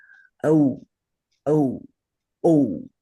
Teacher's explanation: So the reasons for this is are that the way you make the first gona a is by combining the primal uh with the i sound a and that to the sanskrit ear sounds like a a i a a and the second gona is o. So here you take the primal uh sound and you combine it with oo and that to the sanskrit ear sounds like oh o. So I think you can see both how they're made and what they sound like to us in 2026 much later.